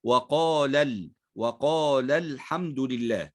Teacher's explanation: لكن عند وصل الكلمة، كلمة وقال، بالكلمة التي بعدها تلتقي هذه الألف المادية الساكنة باللام الساكنة فيلتقي ساكنان، فنقوم بالتخلص من التقاء الساكنين بحذف حرف المد، فتحذف الألف المادية وننطق فقط بلام مفتوحة